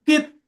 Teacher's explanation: তর উপরে সাকিন, আর ত ঘুরবে কলকলা পাঁচটির মধ্যে একটি, তাই তকে কলকলা করে ডান দিকের অক্ষরের সাথে মিলিয়ে পড়তে হবে